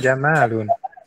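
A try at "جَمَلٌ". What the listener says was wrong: enggak enggak dipanjangin ya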